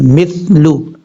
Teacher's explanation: میم سا زیر مس، لام پشلو، مثلو۔ میم کے بعد جو سا ہے، یہ سا سیٹی کے ساتھ نہیں پڑھنا، بغیر سیٹی کے ساتھ پڑھنا ہے،